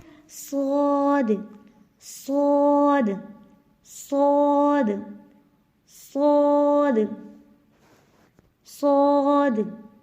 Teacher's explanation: صاد موٹا ہوگا، زا اور سین موٹا نہیں ہوگا